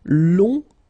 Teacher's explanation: remember you don't pronounce the final G, will become longue.